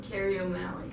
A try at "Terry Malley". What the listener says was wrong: Malley. Malley, no O. You said O'Malley. There's no O.